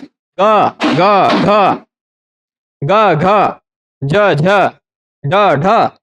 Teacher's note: जिन वर्णों के उच्चारण में गले में गूंज होगी, ग ग घ ग घ ज झ ड ढ, इन सब के उच्चारण में गले में गूंज होगी, यह है घोष